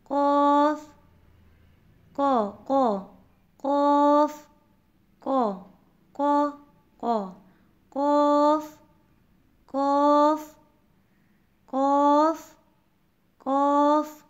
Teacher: قوف کی ادائیگی زبان کی جڑ یعنی کہ زبان کا پچھلا حصہ جب تالو کے نرم حصے سے لگے گا تو قوف ادا ہوگا.